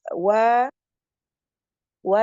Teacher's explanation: dari syafatain dari depan wa sempurnakan wa tipis